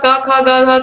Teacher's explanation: क वर्ग का कंठ उच्चारण स्थान होगा